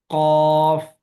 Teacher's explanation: قاف کے اندر بالکل زبان کی جڑ کو قوے کے ساتھ لگا دیے ہے، تو اس سے پھر قاف پڑھتے وقت ایسے محسوس ہوتا ہے جیسے آواز بند ہو رہی ہے. قاف، حالانکہ آواز بند نہیں کرنی.